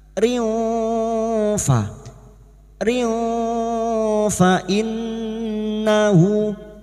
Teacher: nun yang bertasdid gunnah musyaddada kita dengungkan selama 3 harokat. Fa innahu, hadhamir yang berharokat panjang dan tidak bertemu hamzah mad silah khosiro, 2 harokat kita panjangkan.